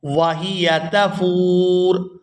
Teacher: یہاں را پر پیش ہے اور ہم یہاں پر وقف کر رہے ہیں تو ہم نے اس را کو ساکن کر دینا ہے